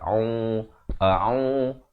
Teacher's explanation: Ain makhrajnya di pertengahan kerongkong bari dhammah, dua harakat.